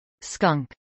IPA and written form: skʌŋk (skunk)